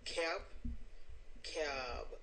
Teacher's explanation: making the vowel longer before the B because it's a voice consonant